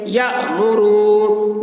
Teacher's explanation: اب یہاں پر واو ساکن سے پہلے پیش ہے، واو مدہ ہوا، اس لیے واو مدہ کو ایک الف کے برابر کھینچ کر پڑھیں گے